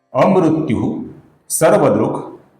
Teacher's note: इसके आगे जो विसर्ग है, इस विसर्ग के आगे स आने के कारण विसर्ग का हल्का सा स ऐसा उच्चारण हम करेंगे